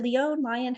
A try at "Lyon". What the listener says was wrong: Lion. Scottish and Irish, not French.